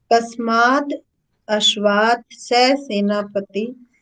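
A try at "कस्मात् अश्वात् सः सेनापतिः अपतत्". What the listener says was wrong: बोलो, ए नहीं बोलो, इसमें एक की मात्रा नहीं लगी है। कस्मात अश्वात सह सेनापति अपतत।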